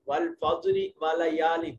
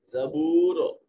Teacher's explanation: اس ساکن کا پہلا حرف اس کے اوپر زبر ہے، اب اس را کو موٹا اور پر کر کے پڑھا جائے گا